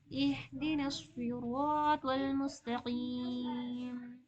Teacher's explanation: इहदिना सिरातल में नहीं, इहदिना हाँ आई है ना, इसीलिए ऐसा पढ़ना। इहदिना हाँ की आवाज हलक के सबसे नीचे वाले हिस्से से निकलती है